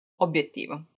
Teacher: And also obiettivo, even though when you're pronouncing it, it seems like it has double B, it doesn't.